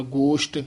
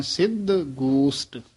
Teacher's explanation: ਸਛਾ ਨਹੀਂ ਲਾਉਣਾ ਸੇ ਨਾਲ ਹੀ ਉਚਾਰਨ ਕਰਨਾ